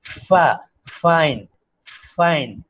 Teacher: labiodental fricative like fa, fa, lips and dent, upper teeth, they contact